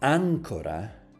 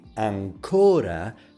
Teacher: placing the stress on the third to the last syllables, you mean anchor. But if you say ancora, placing the stress on the second to the last, you mean still.